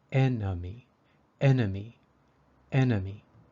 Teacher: sound and thus takes the long e sound these number three the second e in enemy is a little different it sounds like a short u or uh